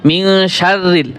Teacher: মিন শাররিল, র পাতলা হয়েছে। কারণ যদি বলেন আপনি শাররিল, হবে না, শাররিল।